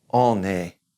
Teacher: we're going to kind of carry that N over because it's followed by that E, that vowel